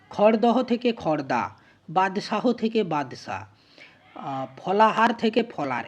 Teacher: এখানে যতগুলো হ ধ্বনি আছে, হ ব্যঞ্জন, সেগুলো প্রত্যেকটাতে হ ব্যঞ্জন লোপ পেয়ে গেছে। তাহলে শব্দ মধ্যস্থ হ ধ্বনি লোপ যেখানে পায় সেখানে যে উচ্চারণের রীতি তাকে বলা হয় হলোপ